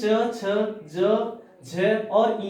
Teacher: च वर्ग का संबंध किससे होता है, तालव्य से होता है,